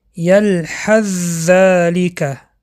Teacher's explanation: حرف ث را به حرف ز درآورده خواندیم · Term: ادغام